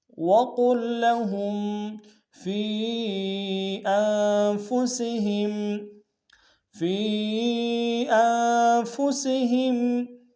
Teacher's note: فی میں یا مدہ ہے، یا مدہ کے اوپر مد منفصل ہے، کم سے کم 2 الف امتداد میں کھینچیں گے ، حمزہ کو نون کے سامنے آئے، نون ساکن غنہ کریں